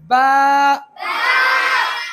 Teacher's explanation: दोनों लब आपस में मिल जाए, मर्ज हो जाए, तब बा होगा।